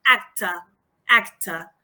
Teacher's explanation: This schwa in final position is more open than in telephone or in ago, acta. You see the difference?